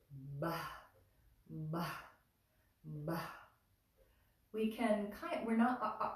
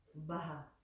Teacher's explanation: So that H makes it an aspirated sound, a breathy sound.